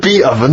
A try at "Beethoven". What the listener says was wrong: Who's the Beat Ovens? No, you said Beat. Beat Oven. It's not Beethoven.